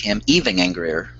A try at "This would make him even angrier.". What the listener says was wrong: Instead of coming up on even, okay, not come down. So even angrier. Okay, so watch your intonation. Okay, so when you're coming up on even, I come up just a touch. You don't want to come up too much.